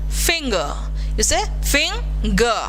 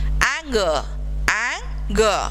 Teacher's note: So you need to use the ng sound and g also beside that.